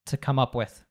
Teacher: reducing the, the To to a schwa sound